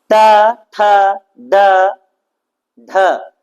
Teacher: ठ ड ढ इसका उच्चारण आपका मुर्धा से होता है